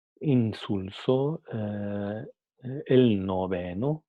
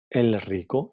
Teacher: como viene seguida por sonidos alveolares, entonces también se queda como sonido alveolar.